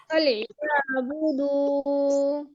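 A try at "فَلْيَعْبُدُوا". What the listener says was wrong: দু এখন টান দিয়েছেন, তখন টানটা হয়নি প্রথমবার, দ্বিতীয়বার দিয়েছিলেন সে সময়। ফালিয়াবুদু।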